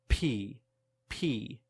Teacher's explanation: the air in your mouth and then release it B but with P there is much more air pressure built up